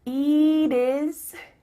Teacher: Here, the final T is changing to a D.